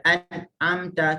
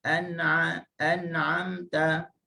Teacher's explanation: huruf nun ni tak boleh mati terus sebab dia ada sifat tawassut ataupun sifat bainiyah. Kena baca an'amta.